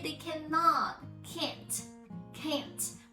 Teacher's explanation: actually I didn't pronounce t at all I just stress on can to make listeners hear the sound instead of saying can't